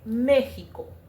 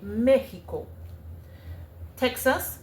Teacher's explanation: So the X, you would substitute it with the H or the J. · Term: the H sound